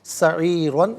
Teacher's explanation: زدناہم سعیرن، را پر دو زبر کی تنوین پر کر کے پڑھا جائے گا، وقف میں دو زبر کی تنوین الف سے چینج ہوگی اور اس صورت میں بھی را کو پر کر کے پڑھیں گے